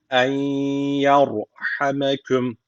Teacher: öncesindeki harfin harekesi üstte olduğu için ra harfi burada kalın okunması gerekiyor